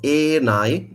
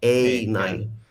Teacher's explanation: So it's a monophthongal e, not a diphthongal a. Yeah, which would be the equivalent of our bait.